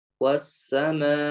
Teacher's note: Beda dengan as-sama, karena dia muhaqqaq hamzah, ya maka ya dia ini dibaca jelas hamzahnya.